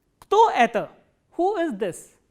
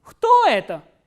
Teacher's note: the pitch goes up on the interrogative word and then it comes down towards the end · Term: intonational construction